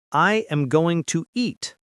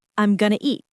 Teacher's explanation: The sounds connect. Going to becomes gonna. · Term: connected speech